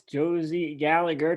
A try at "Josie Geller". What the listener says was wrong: It's Josie Geller. You added like 4 syllables to that, dude.